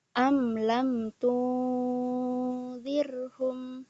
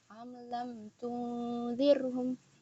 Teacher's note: Nah, mim bertemu dengan lam, am lam. Nah, di sini dibacanya jelas. Izhar syafawi, am lam. Dia nggak dengung dan juga nggak diidghamkan. Am lam tunzirhum.